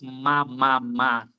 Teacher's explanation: Então o M tem uma categoria nasal bilabial, porque eu uso os dois lábios